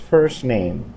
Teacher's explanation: letra nuevamente first 2 min ya cuando agregamos la palabra neem la letra t en la palabra en realidad disminuimos prácticamente no suena